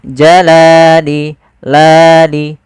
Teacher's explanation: Panjangnya adalah 2 harokat. Yaitu kita memanjangkan lamnya. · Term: mad tabi'i